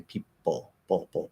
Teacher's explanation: You can already be in that ol when you release the P. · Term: dark L